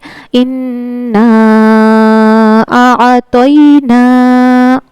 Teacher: त पुर पढ़ा जाता है। ता हरूफ मुस्तालिया के सात हुफों में से है। तो इसको हर हाल में पुर पढ़ना है।